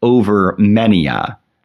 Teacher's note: Further, sometimes Poe will insert a dactylic foot, stressed unstressed unstressed, instead of a trochee, as in the second foot of the second line, over many a. Many a being a three-syllable foot of stressed unstressed unstressed replacing a two-syllable foot of stressed unstressed.